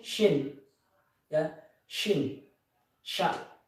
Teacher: tempat keluarnya huruf shin ini yaitu wastul lisan, yaitu tengah lidah